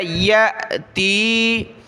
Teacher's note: حمزہ ساکنہ ہے، جھٹکا دیا